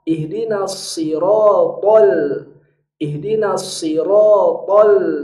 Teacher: Lam ini tidak boleh menumpang di rahang to, karena nanti dia jadi ikut tebal. Haknya huruf lam di sini harus tipis.